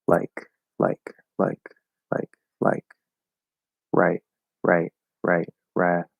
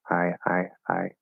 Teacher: raising only happens before unvoiced consonants